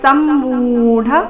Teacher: ಸಮ್ಮೂಢ ಮು ದೀರ್ಘ ಮುಂದೆ ಡ ಮಹಾಪ್ರಾಣ ರಸ್ವ